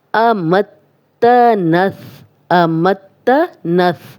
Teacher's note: وَهَدَيْنَاهُ النَّجْدَيْنِ، امتنث، امتنث، میم کی زبر تا سے ملے گی، تا کیونکہ شد ہے اور تا یہ 2 بار پڑھا جائے گا، ایک دفعہ میم کی زبر کے ساتھ، ایک دفعہ اپنی زبر کے ساتھ